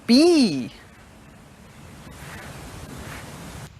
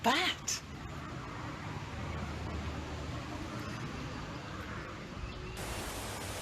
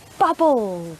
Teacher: you put your lips together and then open them by pushing air out but we also use our voice box so we use our mouth and our voice box for this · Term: voiced sound